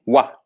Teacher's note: Pode pronunciar o a, para não dificultar, ok? Mas assim, a pronúncia, digamos, correta dele não é um o, é um u, é um wa. Esse wa que o OI cria é como se fosse o WA do inglês, do what, why, esse wa, para vocês terem uma ideia.